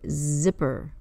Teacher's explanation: Z is voiced the vibration at the front of the mouth on your tongue is behind the front teeth